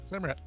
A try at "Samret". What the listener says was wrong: There's no A. Sorry. E-T. Samret.